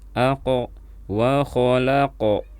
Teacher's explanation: Ini kalau kita melihat huruf qaf kita baca qalqalah. Huruf qaf sukun kita baca qalqalah. Kita pantulkan suaranya.